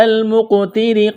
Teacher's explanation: لام کے ساتھ ملانا ہے، اس یا کو نہیں پڑھیں گے، قاف پر قلقلہ کریں گے، قاف ساکن ہے، قاف کو موٹا کرنا ہے ، را کے نیچے زیر ہے، را کو باریک کرنا ہے،